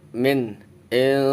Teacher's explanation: jadi yang dipanjangkan huruf la. Ukuran panjangnya sama seperti matobi'i, 1 alif 2 harokat atau 2 ketuk. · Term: fathah berdiri